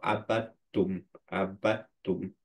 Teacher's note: এটাকে ফুল ইদগাম বলে কারণ হচ্ছে প্রথম লেটারটা কমপ্লিটলি অমিটেড হয়ে যাচ্ছে